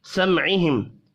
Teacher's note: سمعہم میم ساکن کے بعد عین ہے، اظہار شفی ہوگا